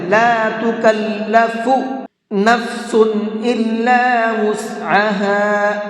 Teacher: ہا کو تھوڑا سا یعنی ایک الف کے برابر کھینچ کر کے پڑھیں گے